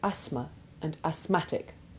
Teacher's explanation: the th remains silent in asthma and asthmatic.